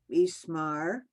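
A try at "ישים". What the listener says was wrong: Okay, the first word starts with the yeah. Okay, yesim, and then yesimech.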